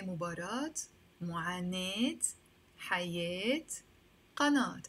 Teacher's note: only when it comes to words that have an alif before the Taa Marbouta, we actually even pronounce the Taa Marbouta as a T.